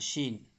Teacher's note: یہ شین زبان کے بیچ حصے سے نکلتا ہے